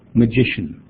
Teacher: we need to get the stress on the second syllable